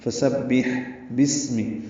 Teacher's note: فسبح، فا کو جلدی ادا کرنا ہے، سین صفیر کی آواز سے ادا کریں گے، با سے ملائیں گے، با کو ہا سے ملائیں گے، ہا وسط حلق سے ادا ہوگا اور اس پہ ہمس ہوگا یعنی سانس جاری رہے گی · با کو اسم کے سین سے ملا دینا، یہ الف نہیں پڑھنا، بسمی ہو جائے گا۔ سین ساکن ہے، صفیر کی آواز سے ادا ہوگا اور اس میں بھی ہمس ہوگا۔